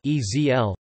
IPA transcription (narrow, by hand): ˈkɪsn̩